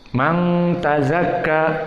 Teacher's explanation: Ada hukum nun sakinah bertemu dengan ta, maka dia ikhfa, dan hukmu ikhfa bigunnah dari khaysum. Man tazakka, maka makhrajnya dari khaysum 2 harokat.